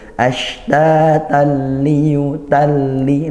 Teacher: ini tanwin bertemu lam, bunyi tanwinnya sudah hilang, sehingga ini namanya idgham bila gunnah.